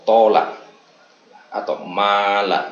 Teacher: alif ini termasuk huruf jawf, karena itu hanya dibaca panjang menjadi a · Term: huruf mad